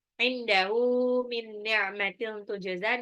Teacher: Terus inda itu nun sukun ketemu dal itu ikfa, ditahan.